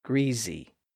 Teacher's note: voiced vowels e so in that environment we would expect that some speakers would constrict and activate the vocal folds all the way through thereby voicing the consonant in the middle